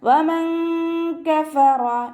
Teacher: നൂനിൻ്റെ സൗണ്ടിനെ വ്യക്തമായിട്ട് കേൾപ്പിക്കരുത്, നാവിനെ മഖ്റജിൽ തട്ടിക്കാതെ വെക്കുക. വമൻ കഫറ, വമൻ കഫറ, റ ഫതഹ ആയതുകൊണ്ട് ഉയർത്തിയിട്ട് ഉച്ചരിക്കുക കേട്ടോ.